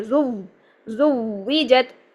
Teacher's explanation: تو ہم نے اس زا کو اس واو کے ساتھ فوراً ملانا ہے ، زو نہیں بنانا ہے، کیونکہ یہ دیکھیں واو ساکن سے